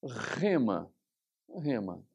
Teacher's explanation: essa palavra começa com ro E logicamente ela sempre será aspirada